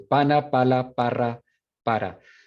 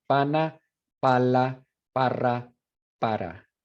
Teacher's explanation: So it means the point of the tongue touches right out here, the alveolar ridge, right behind your teeth. Contacto entre el ápice de la lengua, o sea, la punta de la lengua, y los alveolos. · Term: ápico alveolar